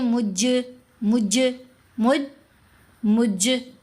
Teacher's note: جیم ساکن ہے اور یہاں جیم کے اوپر ہم قلقلہ بھی ادا کریں گے۔ مجرمون پڑھیں تو پھر قلقلہ نہیں ہوا، ہم پڑھیں گے مج، یہ قلقلہ کی ساؤنڈ ہے۔